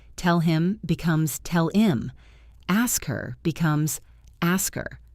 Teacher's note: In English, especially in fast casual speech, we often drop the H at the beginning of pronouns and auxiliary verbs